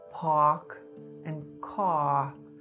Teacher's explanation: THE TENDENCY TO DROP THE R WHEN IT FOLLOWS A VOWEL. SO IN A WORD LIKE PARK OR CAR, YOU’LL HEAR SOME NEW YORKERS SAY SOMETHING LIKE PARK AND CAR AND THAT WE CALL R-LISTNESS. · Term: R-lessness